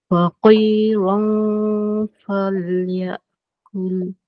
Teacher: Jadi dia ada tebal nipis lah kat situ. Masa dengung tu ra tu tebal. Tapi nak masuk huruf fa tu dia nipis balik. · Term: ra tebal